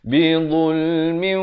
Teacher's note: Masuk beserta dengung dua harakat. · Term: idgham bi gunnah